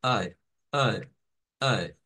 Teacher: es una mezcla entre una a y una e pero no es como que decir a e juntas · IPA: æ